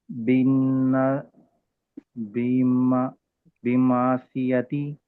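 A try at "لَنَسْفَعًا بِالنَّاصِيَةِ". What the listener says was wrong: మా ఎందుకు చదువుతున్నారు ఇక్కడ? నూనె కదా ఉంది. నూనెకి నూనె తన్వీన్ నూనె సాకిన్ వచ్చినప్పుడు మాత్రమే ఇఖ్లాబ్ నియమం వస్తుంది. ఇక్కడ తన్వీన్ లేదు, నూనె సాకిన్ లేదు, నూన్ షద్దా ఉంది.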